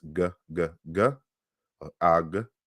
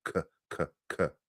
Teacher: So G and K are both velar sounds. So one is voiced, g, g, g, ag, and then we have K, the voiceless velar sound, k, k, k, right?